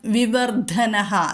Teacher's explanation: ധ ഒന്ന് ഘോഷത്തിലേക്ക് വരണം